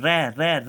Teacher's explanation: हम रे रे रे बोल रहे हैं तो हमारी जीभ क्या कर रही है, प्रकंपित कर रही है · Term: लुंठित ध्वनियां